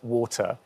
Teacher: I don't have the R at the end of that vowel